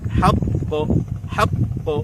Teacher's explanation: হাক এবং ক এর মাঝখানে ব্যবধান হবে না।